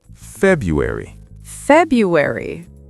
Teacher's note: The first R is often silent in American English.